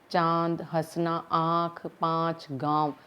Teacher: इसी प्रकार अनुनासिका वर्ण होता है जिस पर अ के ऊपर चंद्र बिंदु होता है। इसकी साउंड निकालते समय ये मुंह और नाक दोनों से इसकी ध्वनि निकलती है।